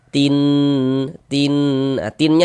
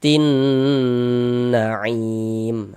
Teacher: Jadi bagian tinnya itu kita dengungkan ya. Kita tahan suaranya kita panjangkan sejenak. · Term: ghunah musyaddadah